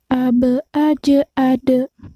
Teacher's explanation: huruf ba, jim, dal kita pantulkan seperti seolah-olah bicara huruf e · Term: qalqalah